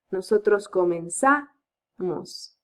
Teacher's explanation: the syllable with more stress in the nosotros and vosotros form doesn't fall in the E, falls in the next syllable.